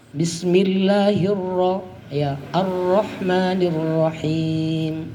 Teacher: Ro-nya juga dibaca tebal, dibaca tafkhim